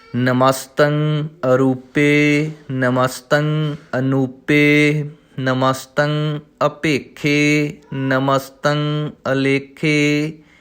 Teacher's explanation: ਇਹਨਾਂ ਪਾਠਾਂ ਦੇ ਵਿੱਚ ਜੋ ਐੜਾ ਅਗੇਤਰ ਹੈ, ਥੋੜ੍ਹਾ ਜਿਹਾ ਅਗਲੇ ਦੋ ਅੱਖਰਾਂ ਤੋਂ ਨਿਖੇੜ ਕੇ ਪੜ੍ਹਾਂਗੇ